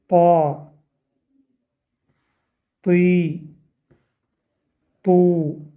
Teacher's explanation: Буква «То» произносится, когда передняя часть языка касается основания верхних передних зубов. Кроме того, приподнимается корень языка.